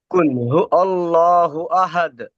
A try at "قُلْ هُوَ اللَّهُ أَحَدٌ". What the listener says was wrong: টান দেন একটু। قل هو الله أحد।